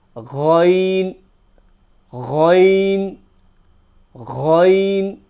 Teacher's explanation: So this is another letter that is from the top of the throat. So you got the gargling type of sound, and it's from the top of the throat, and it's quite guttural.